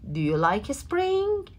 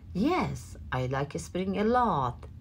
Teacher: وقتی این جمله رو داریم میگیم آخرش رو میبریم به سمت بالا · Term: rising intonation